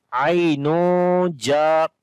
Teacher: After the Tanween, the next is Jim. So we make Ikhfa sound here.